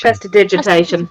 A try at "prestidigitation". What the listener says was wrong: You're missing a syllable.